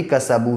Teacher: اسی طریقے سے سین کے اوپر زبر ہے، واو ساکن سے پہلے با کے اوپر پیش ہے، اس لیے واو مدہ ہوگا، اور واو پہلے سے ہی ساکن ہے، اگر آپ یہاں پہ رکیں گے تو کسبو اور ملائیں گے تب بھی کسبو ہی پڑھا جائے گا، ٹھیک ہے۔